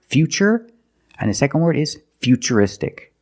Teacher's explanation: We pronounce the t as ch. And we see t u r i in futuristic. Again the t is pronounced with the ch sound.